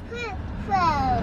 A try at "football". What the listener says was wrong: Foot. He has a hard time with F's, the F sound.